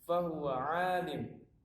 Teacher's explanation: Maka mun ini tidak boleh dibaca mun, tapi disukunkan. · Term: waqaf